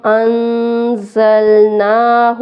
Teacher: نون جزم پہ اخفا ہم کریں گے۔ زا سیٹی والے حروف میں ہے اس لیے اس کو سختی سے پڑھیں گے۔